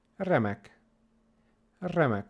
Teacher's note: we roll it a little bit more than in English